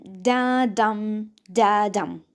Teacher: the first is unstressed and the second stressed the sound it sound something like da da da da the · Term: iambic, iambic pentameter